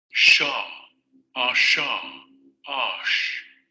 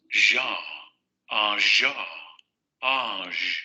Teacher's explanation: Se va a generar nuevamente el movimiento, el modo de articulación fricativo, es decir, el aire tiene que salir con cierta dificultad, pero tiene que ir saliendo poco a poco, y van a vibrar las cuerdas vocales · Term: el sonoro